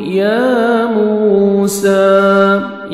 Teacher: یا کو مر کھڑا زبر ہے، 1 سیکنڈ آپ نے یا کو کھینچنا ہے